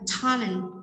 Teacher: Tiếp theo, talent show, chúng ta nhấn vào talent